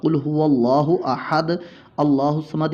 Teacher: تو یہ حمزہ وصلی ختم ہو جائے گا، یہاں پر تنوین کے نون کو زیر دیں گے